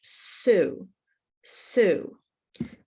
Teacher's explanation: The tongue is behind the teeth, close to the teeth in the front. It's not at the back. And you may notice that the sides of the tongue are curl up a little bit.